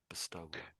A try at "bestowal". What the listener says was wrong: there's a W there. and I am sort of saying it, but you're a little bit too strong on it. It's one of those words where it's almost as if it's not exactly silent.